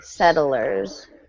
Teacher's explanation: so the two T's sound like a d